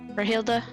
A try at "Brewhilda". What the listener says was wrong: You gotta put more emphasis on the brew.